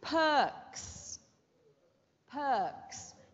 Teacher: Is the R silent or pronounced in this word? It's silent. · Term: silent R